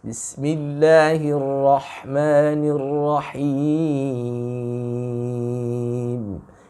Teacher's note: Ya, suaranya agak sedikit imalah, condong ke e. Him harus ditutup dengan i, bunyi i.